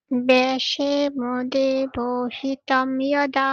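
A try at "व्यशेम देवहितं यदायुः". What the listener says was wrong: তম যদায়ুঃ বলছেন, এটা কি কি করবেন? তৈ যদায়ুঃ, তৈ যদায়ুঃ বলুন।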